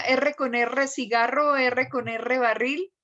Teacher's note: El movimiento tiene que estar en la punta de la lengua, no más atrás.